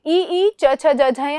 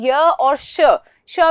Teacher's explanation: तो तालु में ई च छ ज झ ञ, और स्पेशल में आपको याद रखना है य और श भी शलगम वाला, ये उच्चारित होंगे हमारे तालु से